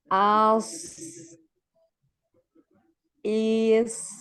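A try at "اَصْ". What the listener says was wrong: Hamzanya jangan panjang, tidak dipanjangkan. Als, als, ya, ngalir. D-nya yang ngalir. Tebalkan. Tebal. Naik ya.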